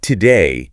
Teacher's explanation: When you say today, that to part isn't a full, clear O sound like in go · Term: reduced